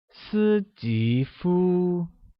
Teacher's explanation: And Steve translates as 斯吉夫.斯吉夫 is said with a high level tone on the first I, a rising tone on the second I, and the high level tone on U. Can you try that?